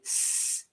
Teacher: So if I say s, it's not voiced, it's just purely made by the air coming through my teeth.